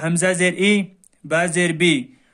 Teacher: معروف پڑھا جائے اور مجہول آواز سے بچا جائے